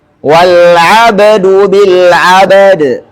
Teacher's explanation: qalqalahnya ba sebelum huruf dal yang kita tempati berhenti dan qalqalanya huruf dal ketika kita berhenti. Ini dua qalqalah berdampingan.